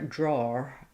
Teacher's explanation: In British English they have this vowel a which is further back. It's also rounded but it's almost more in the throat. · And so draw, they might use that. Or some British accents also will put an R there